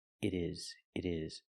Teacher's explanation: Change the T to a fast D.